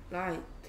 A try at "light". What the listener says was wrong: Light. 발음을 정확하게 해야지 그 소리를 글자로 바꿀 때 T를 안 빼먹을 거 아닙니까? Light 이러고 있으면 어떡합니까? 소리 안 나는 GH. Like, 흐트 아니고 Light.